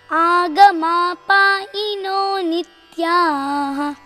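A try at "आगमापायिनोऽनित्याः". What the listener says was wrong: It's not pa-ino. Agamapayino Nityaha.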